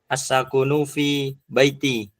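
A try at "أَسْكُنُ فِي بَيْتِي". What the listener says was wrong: Askunu, ini sukun, afan nazum sedikit ya.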